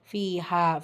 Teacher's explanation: ஃபீலையும் யா மத்தா இரண்டு ஹரக்கத் அளவு நீட்டம் கொடுத்து ஓதணும்